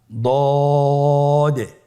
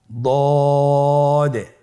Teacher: দদের মাখরাজ জিহ্বার গোড়ার কিনারা সামনের উপরের দুই দাঁতের গোড়ার সঙ্গে লাগিয়ে উচ্চারিত হয়